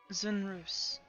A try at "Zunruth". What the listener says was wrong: Zunruth. No S. Zonruth.